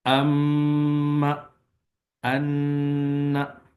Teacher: नाक की जड़ में आवाज जो है वो गुनगुना रही होती है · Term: गुन्ना